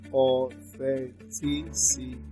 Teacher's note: That is the syllable before the syllable before the last syllable. Here you stress the third syllable from the end.